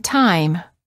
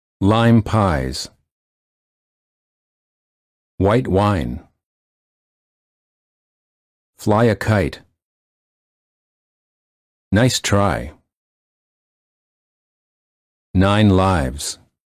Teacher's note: For the I sound, the lips are open and not rounded, and they close a bit when moving to the I position. The tongue is relaxed, and it moves from a flat to high position.